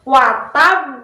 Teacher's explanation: Maka cara membacanya kita perlihatkan dulu tasydidnya. Watab baru kita pantulkan ke qalqalah.